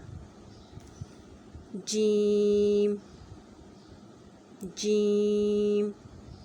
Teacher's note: اس کا مخرج کہ یہ زبان کے درمیان کا حصہ اوپر اٹھے اور تالو کو لگ جائے تو جیم ادا ہوگا، جیم، اس کی صفت بھی باریک ہے۔